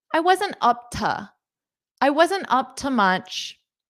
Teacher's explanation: notice up to, you can say that to as a more unstressed to